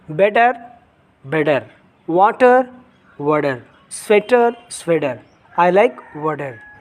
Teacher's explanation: American accent. So if T has come between two vowels, you have to say instead of T, you have to use a D.